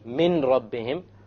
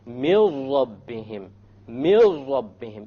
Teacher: So you don't say min rabbihim, you drop it. You drop the noon and you merge the meme with the ra. And you say, mil rabbihim, mil rabbihim, immediately. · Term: idgham